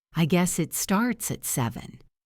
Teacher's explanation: Notice how the pitch of your voice might go up slightly at the end, or stay flat, showing that slight uncertainty. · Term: intonation